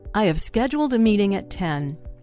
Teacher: scheduled, meeting, and 10 all stand out · I, which is a pronoun, the words have, a, and at, those are all reduced, or they're weakened. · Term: stress